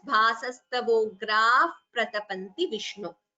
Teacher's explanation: So bhasastavograha pratapanti. Visarga followed by pa, as you know, would be upadmaniya. So instead of the visarga, we chant it as bhasastavograha pratapanti Vishnu.